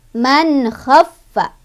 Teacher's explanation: Man khaffa, fa-nya agak ditekan karena ada tasydid ya.